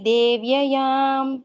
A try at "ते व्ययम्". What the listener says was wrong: Instead of tha tha tha, you are saying devyayam, but in Sanskrit, if you turn this one, meaning itself will go wrong.